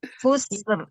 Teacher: Sin tu jangan diberi baris. Sin tu jangan bunyi ser. Tak nak bunyi ser.